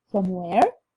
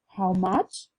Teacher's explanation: Echo question take a rising intonation and stress on the WH word.